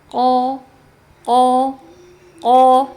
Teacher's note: Jadi karena dibacanya tebal, nah kemudian tenggorokan menyepit. · Sifat yang selanjutnya dari huruf qof adalah istiala. Ya, huruf qof adalah huruf yang dibaca tebal, yaitu suaranya diarahkan ke langit-langit · Huruf qaf adalah huruf yang dibaca tebal, yaitu suaranya diarahkan ke langit-langit, ya. Caranya gimana? Dengan lidahnya naik, ya. Perhatikan di gambar, ada cekungan lidahnya, ya. · Ko, ya. Jangan mulutnya dimonyongkan, tidak, tapi pangkal lidahnya dinaikkan. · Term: isti'la